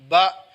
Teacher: لفظ بن گیا، زبر کے ساتھ بن گیا با، کیونکہ زبر ہے آواز کی سطح اوپر ہوگی۔